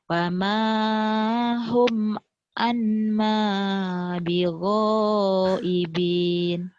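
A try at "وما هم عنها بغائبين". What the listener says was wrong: Wa anha. Ini ha kalau gini ya. Kalau ma tuh ke bawahnya cuma satu. Di Bengkulu ini ini mim ya, bukan ha. Wa mahum anha bighaibin.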